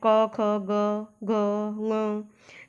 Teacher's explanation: क की जो ध्वनि है, जो साउंड है, वो आपके कंठ से होकर निकल रहा है। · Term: कंठ्य ध्वनि